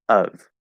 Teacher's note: It's the upside down V sound, which I call a schwa sound. Of. We go right into that upside down V position automatically, okay?